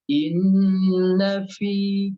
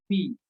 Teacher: Seperti misalkan fa, inna fi, jangan fi tapi fi, menekan. Fi jelas ada bunyi hamesnya, ada nafas yang keluar.